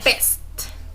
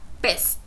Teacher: The consonant B is a plosive sound. You block the air fully with both lips, and then release it